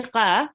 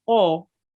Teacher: And the other thing about qaf is it is a thick letter, meaning when you pronounce qaf, you have to round your mouth a bit. I won't say qa, I will say qa.